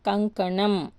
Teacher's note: ఇది అనునాసికం కంకణం ముక్కుతో పలుకుతుంది